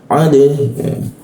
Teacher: huruf dal ketika dimatikan maka dipantulkan dia pantulkan ke arah e